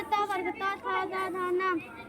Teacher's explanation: त वर्ग त थ द ध न। ल और स बोले जाते हैं दंत से